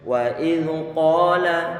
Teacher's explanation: wa iz kita perhatikan wa dia kita baca dengan tipis. Kemudian alif hamzahnya di situ tentunya dia dikasrohkan.